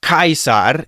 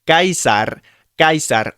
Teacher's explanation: You don't actually say that puff of air behind it. Us English speakers have a lot of breath behind our words.